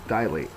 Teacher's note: Dilate's a verb. The first syllable is the accented one